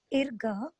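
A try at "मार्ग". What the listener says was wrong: Repa plus ga is RGA. But in the word you can read that conjunct consonant because ma is there, a is there. Therefore, mar.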